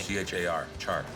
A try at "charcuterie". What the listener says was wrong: Instead of saying cha, say sh. Everybody says it wrong majority of the time. It's pronounced charcuterie. Charcuterie. Charcuterie.